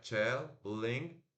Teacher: o NG é o N que trava no céu da boca